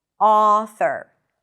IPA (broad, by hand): ˈɔ.θəɹ